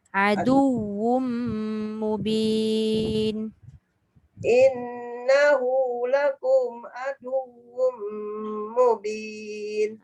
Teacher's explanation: Adu tu kalau kita tengok kan. Adu tu dal kepada waw tu tak dengung. Yang dengungnya wum tu.